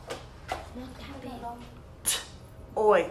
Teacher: And the next sound I hear is oi, which is a gliding vowel.